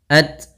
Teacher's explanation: sifat hamas yaitu mengalirnya nafas kita ketika melafalkan tak sukun